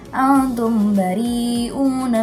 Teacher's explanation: Dan yang terakhir ada hukum bacaan ikhfa syafawi di kata antum bari'una karena ada mim mati yang bertemu dengan huruf ba. Dibacanya harus mendengung.